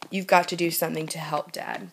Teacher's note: That's just repeating the obvious ooh sound in to, do, and to.